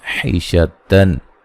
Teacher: یہاں نون تنوین کا اظہار غنہ نہیں کریں گے